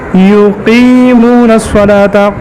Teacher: قاف موٹا قاف، جہر ہے اور شدت بھی ہے، استعلاء بھی ہے